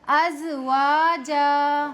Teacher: زا میں سفیر کی صفت پیدا کروں گی، دھیان سے سنیے، ازواجا۔ اگر میں اسے اس طرح پڑھتی ہوں ازواجا تو اس طرح پڑھنے سے یہ زا زال بن گیا ہے